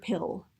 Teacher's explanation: The back of your tongue for pill raises up.